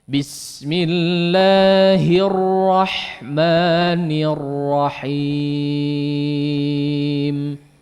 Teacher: Jangan kebanyakan r-nya ya. R-nya jangan terlalu banyak tapi ya sekedarnya ya, getaran yang halus ya, getaran yang halus kemudian coba ditebalkan. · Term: menebalkan huruf ra